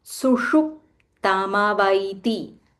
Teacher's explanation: There is a half p and a full t, and this is sh. This is called Murdanya sh. So you'll have to roll your tongue and say Sushup tamavaiti.